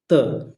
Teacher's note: दांत से जो बोला जाता है, यानी बोलते समय जहां जीभ दांत पे आके लगती है उसी को दंतव्य कहा जाता है